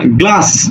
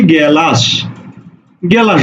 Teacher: এই যুক্ত ব্যঞ্জনটা ভেঙে গেছে আলাদা হয়ে গেছে এই ভেঙে যাওয়ার কারণে এর ভিতরে একটা স্বরাধ্বনি ঢুকেছে এই স্বরাধ্বনি ঢোকার কারণে এটাকে আমরা বলছি কি মধ্য স্বরা গম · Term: বিপ্রকর্ষ